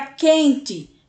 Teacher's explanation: a palavra quente é a mesma coisa que u sendo que esse U nem é pronunciado ele se funde ele se junta com a letra q e a gente já pula logo para o e quente é